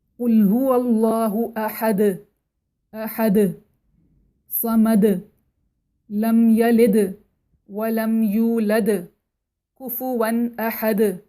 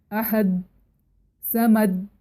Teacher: اسی طرح سے حرف کی صفات، مطلب اگر ہم سورہ اخلاص کی مثال لیں، سورہ اخلاص کی ہر آیت کے آخر میں دال سکون کے ساتھ پڑھا جاتا ہے، اور دال سکون کے ساتھ جب آئے تو اس کی خاص صفت ہے کہ وہ باؤنس کر کے پڑھا جاتا ہے جس کو قلقلہ کہتے ہیں